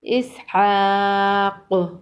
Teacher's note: وقف کی صورت میں قوف پر قلقلہ ہوگا